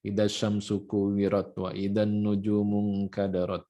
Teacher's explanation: ketukannya cepat, akhir ayatnya juga kita baca pendek.